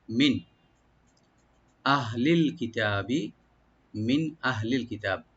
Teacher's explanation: মিন এখানে নুন সাকিন আছে, এখানে নুন সাকিন এখানে আমরা জাহার করব, এখানে গুণনা হবে না।